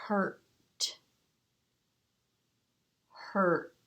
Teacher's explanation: It's almost skipping the vowel sound, isn't it? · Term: R-controlled vowel